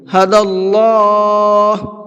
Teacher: اللہ کے لام کو پر کر کے پڑھیں گے، اس لیے کہ اللہ کے لام سے پہلے دال کے اوپر زبر ہے۔ اللہ کے لام سے پہلے زبر ہوتا ہے تو اللہ کے لام کو مبھر کے پڑھتے ہیں۔